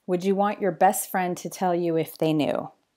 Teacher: the way he actually said it was without the T. It sounded like he just said, best friend. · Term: elision